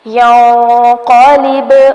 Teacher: ینقلب نون پر اخفا ہوگا جبکہ با ساکن ہے اس لیے ہلا کر پڑھیں گے کلکلا کیا جائے گا